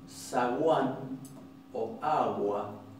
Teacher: en una posición intervocálica, esa G se va a convertir en una fricativa casi aproximante